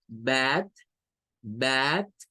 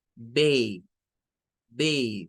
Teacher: En primer lugar, esta ya no tiene el sonido AE, sino que va a perder el sonido AE y va a tomar un sonido EI, es decir, un sonido largo